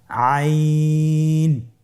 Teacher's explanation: আইন হরফটি উচ্চারণের সময় অবশ্যই তিন আলিফ টেনে পড়তে হবে। এখন আইন হরফটি বারিক হরফ। পাতলা করে পড়তে হবে।